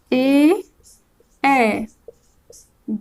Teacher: ए के उच्चारण में प्रयोग होने वाले स्थान है कंठ तालु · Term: कंठ तालव्य